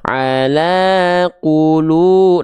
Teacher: Lamnya di sini dibaca dengan vokal A dengan kadar panjang dua harakat. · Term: mad thbi'i